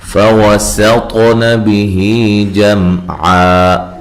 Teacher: سین کو باریک سیٹی سے، طا کو موٹا پڑھنا ہے اور ہلا کر پڑھنا ہے